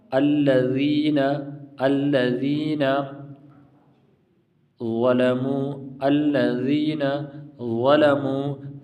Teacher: ذا مفخم ہے، یعنی اس کو پر موٹا پڑھتے ہیں۔